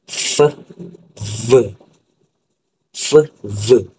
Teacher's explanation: F dengan V. Iaitu bibir bawah akan sentuh dengan gigi atas.